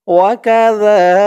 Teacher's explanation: জালের উচ্চারণটা একদম নরম পাতলা হবে, জিহ্বার মাথা উপরের দাঁতের মাথার সাথে লাগবে জালের উচ্চারণটা করার সময়।